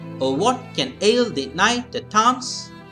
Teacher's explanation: We have 8 syllables, and so it has got 4 feet, and the first syllable is not stressed. Okay, so the odd syllables are not stressed and the even syllables are stressed. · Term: iambic meter